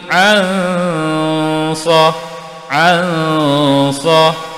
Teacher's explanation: di sini berlaku dengung ikhfa hakiki, dengung 2 harakat.